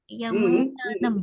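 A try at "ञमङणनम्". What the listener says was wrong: Don't separate your teeth. Nya, ma, nye, na, nam.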